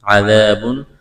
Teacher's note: ذال کو نرم کرنا ہے، الف مدہ ہے، تنوین کے بعد حروف حلقی میں سے حمزہ ہے، تو یہاں پر اظہار کریں گے، آواز ناک میں نہیں چھپائیں گے، غنہ نہیں کریں گے۔